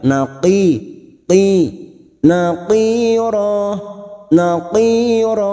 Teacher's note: dua harakat naqiro huruf qof yang berharakat asr huruf q ini huruf Istia pada saat harakat kasr kita harus membaca tebal naqi Qi naqir naqir Jangan samakan dengan Kaf karena huruf Q